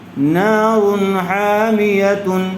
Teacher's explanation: بغیر غنے کے جلد اظہار کر کے پڑھیں گے